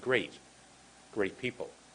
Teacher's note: we almost don't say the te · we have very short uh soft te's at the end of words